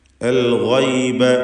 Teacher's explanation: ഗൈനിന് തഫ്ഖീം, പൂർണ്ണമായ തഫ്ഖീം കൊടുക്കുക, തടിപ്പിക്കുക.